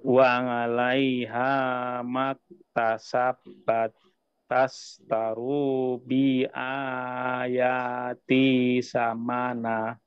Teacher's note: Di sini di bi, bi-nya tidak panjang. Tadi secara tidak sengaja Bapak memanjangkan bi-nya ya.